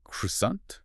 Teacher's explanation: You can really hear the hard R sound there. Yeah, and you hear the T at the very end.